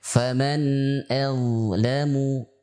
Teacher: huruf dha termasuk huruf yang bertekanan ringan, ya, atau kita sebut dengan huruf rokhawah, atau huruf yang bertumpu kepada suara, tidak bertumpu kepada makhraj